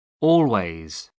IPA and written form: ˈɔːlweɪz (always)